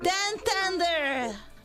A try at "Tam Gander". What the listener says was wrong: Not tender, gander. It's not Tam Tender, okay? It sounds like some sort of chicken tendies or something. It's Tam Gander.